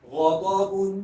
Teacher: شروع کے 2 حروف کو موٹا پڑھیں، موٹا کر کے پڑھیں کیونکہ حروف مستعلیہ ہے